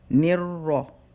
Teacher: we're gonna hold the raw for 1 second, nir, and then we round it